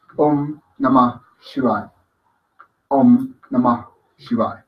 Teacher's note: Siempre tiene que haber esa expulsión de aire en la pronunciación del Namah.